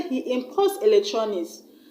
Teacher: Then when I say he imports electronics, I've stressed on the port, the second syllable, because I've used the word as a verb.